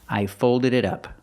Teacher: The T in it sounds like a fast D.